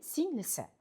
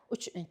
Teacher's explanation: Masalan, singil plus i plus si, ya'ni singlisi. Bunda i egalik qo'shimchasi qo'shilganda singil so'zidagi ikkinchi bo'g'indagi i unlisi tushirilib qoldiriladi. Singli bo'ladi va keyin si egalik qo'shimchasini qo'shamiz.